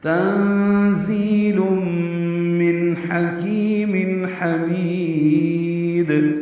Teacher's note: تنزیل میں نون ساکن کے بعد زا آنے کی وجہ سے اخفا ہے. زی تیز صفیر کی آواز سے زا ادا کریں گے، زی پڑھیں گے.